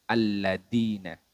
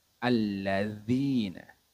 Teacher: huruf dalal ini letaknya yaitu ujung lidah bertemu dengan ujung gigi seri bagian atas alladzina jadi saat pengucapannya ujung lidah kita menyentuh dengan gigi seri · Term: huruf dzal